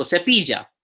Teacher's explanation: There's se, there's pi, and there's ya, cepilla. Second last syllable is the pi, so cepilla. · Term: stress